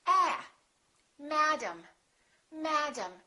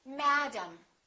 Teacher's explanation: And this A is going to be completely different from this A. They're two different sounds because one vowel is stressed and one vowel is reduced.